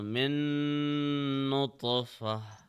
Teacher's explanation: And since noun has a shadda, we will apply 2 seconds of gunna, which means 2 seconds of pressing.